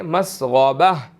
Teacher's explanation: اگر غائن جو ہے وہ موٹے حروفوں میں سے ہے تو ہم اس کو موٹا ادا کریں گے